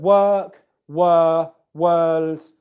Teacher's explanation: So in the word work, were, world, there's no R sound in any of those words, okay? It's just simply the sound after the W.